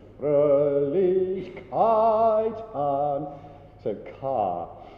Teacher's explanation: kite is going to be ka for most of its length